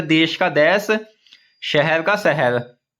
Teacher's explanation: छत्तीसगढ़ी में तालव्य श के स्थान पर दंत्य स का भी प्रयोग होता है